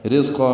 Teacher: رزقا میں را باریک ہے، ذات صفیر کی آواز سے ادا ہوگا. قاف پر پڑیں گے اور الف مدہ مد عوض بنے گا.